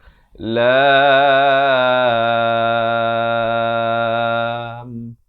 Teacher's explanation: Kemudian lam itu dipanjangkan dengan 6 harakat.